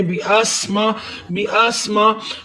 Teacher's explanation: सीन को सीटी की आवाज देते हुए पढ़ना है।